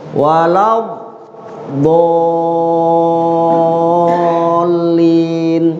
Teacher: Sebab mengatakan kita kumpul mulut kita itu. Dia kan huruf dot keluar tuh dari sisi lidah kiri kanan di gigi geraham bagian atas gitu.